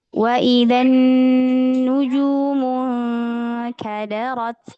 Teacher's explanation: nunnya ada tasydidnya. Di sini juga alif lam syamsiyah ya. Di sini kita sempurnakan gunnahnya.